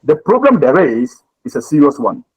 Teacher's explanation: You must stress on the there is.